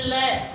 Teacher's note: जैसे ही आप ल बोलते हैं तो आपके जीवा जो है, जो आगे वाला हिस्सा है जीवा का, वो ऊपर उठ जाता है। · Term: पार्श्विक वर्ण